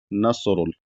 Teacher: स्वाद साकिन है तो यहां पर इसको मोटा पढ़ा जाएगा क्योंकि स्वाद मोटा पढ़ा जाता है · मोटा पढ़ा जाएगा क्योंकि स्वाद मोटा पढ़ा जाता है। नसरुल और रा भी पेश है तो रा को भी मोटा पढ़ा जाएगा